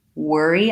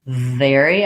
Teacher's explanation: We want to make sure we make those distinct from one another. So when I'm saying worry, I'm going to have a rounded shape versus very, I'm going to have lip and teeth contact for that V.